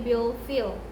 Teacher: Sedangkan fi itu ada mat tabi'i di akhir kalimat menjadi mat arid li sukun, dibacanya panjang 2 sampai 4 harokat